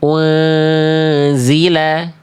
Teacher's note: Un un kayak masih nempel bunyiannya. Betul-betul samar. bersiap-siap melafalkan zai dan ditahan.